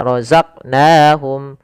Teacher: Pada lafal qaf ini kita kita pantulkan huruf qafnya. Kesalahan yang terjadi adalah tidak memantulkannya.